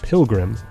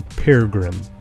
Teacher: The first R dissimilates to an L. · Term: dissimilation